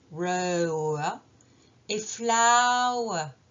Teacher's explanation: le R final est très discret en anglais britannique